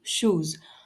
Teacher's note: जब टंग tip alveolar ridge को touch करता है तब ट और ड जैसे साउंड्स बनते हैं, जैसे टाइम और डॉग। टंग ब्लेड और हार्ड पैलेट से श की साउंड बनती है